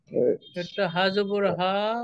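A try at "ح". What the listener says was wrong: হা জবর বলার দরকার নেই, হা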